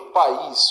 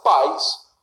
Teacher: E aí não passa a ser hiato, porque eu tenho vogal, mas semivogal. O I, que era forte e recebia acento, passa a ser fraco